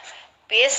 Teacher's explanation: Bis adalah bacaan dibaca hams, hukum dari huruf mati, yaitu dialirkan nafasnya. Bis, sinnya yang mengalir ya, ada semburan di situ.